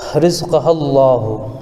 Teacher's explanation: رزقہ اللہ، اگر ہم ملا کر کے پڑھتے ہیں تو لفظ اللہ کے لام سے پہلے زبر ہونے کی وجہ سے لفظ اللہ کے لام کو پر پڑھیں گے